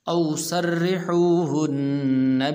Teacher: سرحوہن را کے نیچے زیر ہے تو اس لیے اس را کو باریک کر کے پڑھیں گے